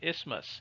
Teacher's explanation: The TH is silent